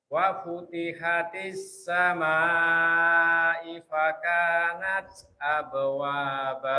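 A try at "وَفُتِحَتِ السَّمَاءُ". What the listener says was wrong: Wa futihatis samaa'u fakanat. Yang tadi hamzahnya bukan i. Pakainya dhamma. Wa futihatis samaa'u fakanat.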